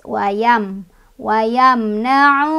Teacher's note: karena ada waw sukun sebelumnya ada domah di huruf ain ya, bacanya dua harokat. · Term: matobi'i